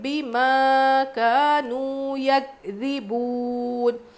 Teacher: بما میں الف مدہ کھینچیں گے، کانو میں بھی واو مدہ کھینچیں گے۔ یکذبون، کاف پہ جزم ہے، قلقلہ بالکل نہیں کریں گے۔